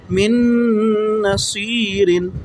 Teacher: نون کے اوپر شد ہو تو غنہ بھی کرتے ہیں